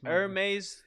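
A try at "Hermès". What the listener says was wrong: Hermes? Hermes. The H is silent, mother.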